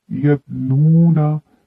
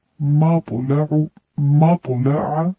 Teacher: تا کی آواز باریک اور بغیر جھٹکے والی ہوتی ہے، جبکہ طا کی آواز موٹی اور جھٹکے والی ہوتی ہے۔ جھٹکے سے مراد یہ نہیں کہ آپ اس کو پورا جھٹکا دیں، بس یہ کہ موٹی ادا کی جاتی ہے۔